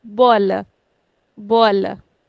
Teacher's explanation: has two syllables, bo, la. We'll put stress on the second last